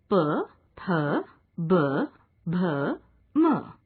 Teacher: इन वर्णों का उच्चारण दोनों होठों को सटाकर किया जाता है। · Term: ओष्ठ्य